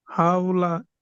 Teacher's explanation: ওয়াওলিনকে সর্বদা নরম আওয়াজে তাড়াতাড়ি পড়তে হয়, টান দেওয়া নিষেধ।